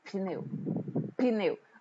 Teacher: a glote estava aberta no P e fechada em neu